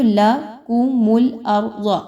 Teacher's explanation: آگے دیکھیں تو لکم الارض، اب یہاں پہ دیکھیں تو لکم الارض، را جو ہے اس پر جزم کا نشان ہے اور اس سے پہلے والے حمزہ پر زبر آ رہا ہے. را کو یہاں پہ پر پڑھیں گے، اس را کو بالکل بھی باریک نہیں پڑھنا. ضاد جو آ رہی ہے وہ آلریڈی موٹا حرف ہے، حروف مستعلیہ میں سے ہے، اس کو پر پڑھیں گے، موٹا کر کے پڑھیں گے.